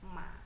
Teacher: Lalu yang ketiga, ma, ma, ma. Jadi nada ketiga turun lalu naik ya